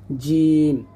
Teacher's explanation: জিম দাঁতে লাগানো যাবে না, জিহ্বার মধ্যখান তার বরাবর উপরে তালুর সঙ্গে লাগবে